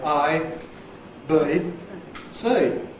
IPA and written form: ʌi bə̯i sə̯i (ABC)